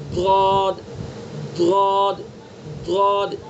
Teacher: ضاد کا مخرج زبان کی کروٹ اور اوپر کی ڈاڑوں کی جڑ. دیکھیے زبان کی یہ کروٹ ہے، سائڈ ہے، یہ کروٹ ہے، یہ کروٹ.